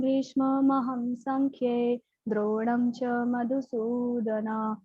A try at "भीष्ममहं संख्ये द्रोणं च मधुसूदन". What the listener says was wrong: नहीं है, ये मधुसूदन है ना, आप ऊपर भी ना बोला। कथम भीष्ममहं संख्ये द्रोणं च मधुसूदन इषुभि प्रतियुत्स्यामि पूजार्हा वरिसूदन। ना नहीं आना चाहिए उच्चारण में।